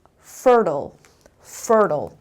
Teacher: so stress is on the first syllable